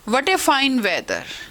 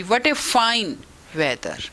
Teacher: What में फाइन में हमारी rising tone है, लेकिन वेदर में हमारी फॉलिंग टोन आती है। वट एकदम खूब जोर लगा के राइजिंग टोन के साथ बोला, वही फाइन में रही, व्हाट ए फाइन वेदर।